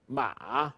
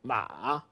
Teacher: you have this break in the middle, like if you had something in your throat when you're talking, ma. You have this ma.